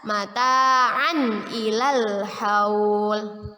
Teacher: Tanwin bertemu dengan huruf hamzah dalam bentuk alif. Kita baca jelas, mata'an ilal haul, ya, izhar.